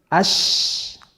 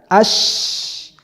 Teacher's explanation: Ketika diucapkan ash, keluar angin di seluruh permukaan mulut. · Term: tafashi